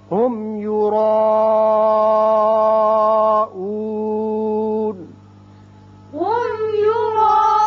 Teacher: یرا را پر ہوگا اور مد ہے مد متصل 5 حرکات طویل. نون زبر ہے لیکن آیت ختم ہوتی ہے، نون ساکن ہو جائے گا.